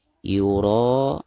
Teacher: ro-nya harus dibaca tebal karena berharakat fathah ya. Jadi disebut ro tafkhim ya.